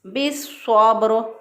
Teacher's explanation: लाम को स्वाद बनाकर स्वाद को स्वाद के अंदर दाखिल कर दिया, मिला दिया, इदगाम कर दिया · बिस्सब्र, अब रा जो है वक़फ़ सूरत में साकिन है, तो उससे पहले वाले हरफ पर देखें फिर बा साकिन है, उससे पहले वाले हरफ पर देखें स्वाद जो है हरूफ़ मुस्तालिया में से है, मोटा हरफ है